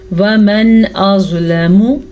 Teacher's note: نون ساکن کے بعد حمزہ حروف حلقی میں سے ہے تو نون ساکن کو ہم ظاہر پڑھیں گے اور بغیر غننے کے پڑھیں گے